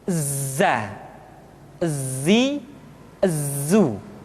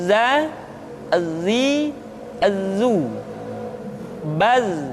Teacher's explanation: suara kita mengalir, akan tetapi nafas tidak boleh mengalir. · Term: al-jahr